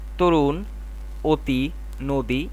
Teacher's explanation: শব্দের আদ্য অ এর উচ্চারণ অ থাকে না হয়ে যায় ও